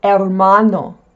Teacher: The H in Spanish is silent. It's not hhh like in English, there is no pronunciation of the letter H.